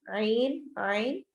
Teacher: عی پر یا مدہ بھی ہو رہا ہے تو ہم اس کو تھوڑا زیادہ لمبا کر کے پڑھیں گے